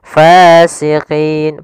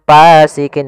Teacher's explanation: ada Mad thbii'i yaitu fathah bertemu dengan alif panjangnya dua harakat hati-hati dalam melafalkan Fa harus ada nafas yang dikeluarkan karena dia sifatnya sus jaryanun nafas jangan pasikin dengan P gitu